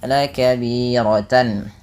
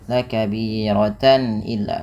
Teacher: Soratannya dibaca dengan jelas. Karena adanya tanwin bertemu dengan huruf hamzah yang di mana dibaca dengan jelas. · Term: izhar halqi